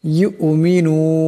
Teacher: পর ইয়া আসছে গরতে গিয়ে হামজা ইয়া কে ধরবে ইদগাম হয়ে যাবে ইদগামের এক আলিফ পরিমাণ গুন্না হবে